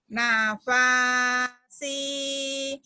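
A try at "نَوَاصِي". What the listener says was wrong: Salah. Nafasi. Salah. Bukan fa itu mah. Bukan. Nawasi.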